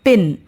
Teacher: the sound p in the word pin is pronounced with a strong puff of air, that is aspirated. Linguists write it as ph.